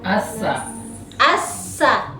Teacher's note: Kalau as dia hams. Berarti hawa atau napas mengalir toh.